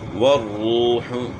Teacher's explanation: را کو موٹا پڑھنا ہے اور واو مدہ بھی ہے